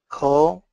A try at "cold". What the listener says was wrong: Cold. And then a stop D. Cold. More L, cold.